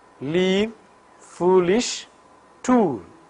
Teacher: the tip and blade of the tongue makes a firm contact with alveolar ridge, effecting the oral closure. But at the same time, the air from the lungs escapes through the two sides of the tongue. Vocal cords vibrate for L. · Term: Lateral consonant